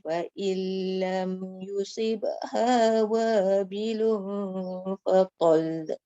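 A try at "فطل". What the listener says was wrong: Jangan bunyi la. Wabilun fatal.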